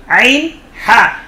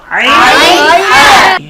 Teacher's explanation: আলহামদু, অনেকে বলে আলহামদু, একটি হলো হা আর একটি হলো হা। কণ্ঠনালীর মধ্যখান থেকে, হলকের মধ্যখান থেকে দুটি হরফ উচ্চারিত হয়, আইন হা। বলো তো, আইন হা।